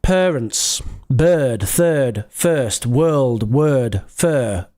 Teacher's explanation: It's the extended schwa. It's like the long version of the schwa. Parents, bird, third, first, world, word, fur, Girl.